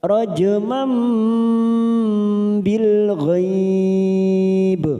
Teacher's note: bil ghaib karena mati di akhir kalimat dan diwakafkan di sini, maka namanya qalqalah kubra